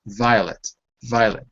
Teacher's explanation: your teeth need to touch behind your bottom lip that's another thing to remember the teeth are not here and